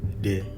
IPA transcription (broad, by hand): de